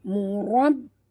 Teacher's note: Ra tebal dan tekan pada ba.